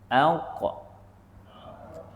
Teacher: itu pangkal lidah tu dekat anak tekak. Maka kita matikanlah dia. · dia menggunakan pangkal lidah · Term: qaf, huruf qaf